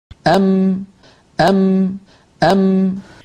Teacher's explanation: दोनों होठों के मिलने से इस तरह अदा होती है कि उसके साथ नाक से भी आवाज खारिज होती है उलमा ने होंठ वाले जुज को यह नाम दिया है कि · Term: मीम